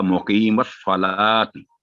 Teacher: स्वाद thick letter, मुकीमुस्सला, ला को गोल नहीं करना